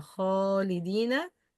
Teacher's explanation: This is heavy letter followed by heavy ألف